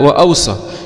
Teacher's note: يقرأ بهمزة مفتوحة بين الواوين وتسكين الواو الثانية وتخفيف الصاد